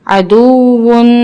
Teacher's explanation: اب یہاں پہ ہم نے واو مشدد پڑھنا ہے، سختی کے ساتھ پڑھنا ہے اور اس پہ ہم نے خیال رکھنا ہے کہ اس کو ادا کرتے ہوئے ہمارے دونوں ہونٹ گول ہو. عدوون ان کی سختی بھی ہوگی اور یہاں پہ تنوین کا قاعدہ بھی اپلائی ہوگا اور واو کو ادا کرتے ہوئے ہمارے دونوں ہونٹ گول ہوں گے.